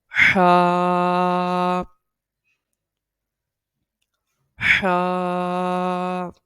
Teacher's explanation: हा, ये इसको एक उंगली की मिकदार के बराबर खींच के पढ़ा जाता है, और ये हलक के निचले हिस्से से, हलक के दरमियान वाले हिस्से से अदा होता है। हा जो है हलक के दरमियान वाले हिस्से से अदा होता है। हा, हा। और इसके अंदर ये जो बारीक आवाज़ है हा, ये आनी चाहिए लाजमी।